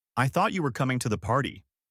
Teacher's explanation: For thought, the vowel sound is a short o or an aw sound, like in caught or bought. So, it's thot-tee tee.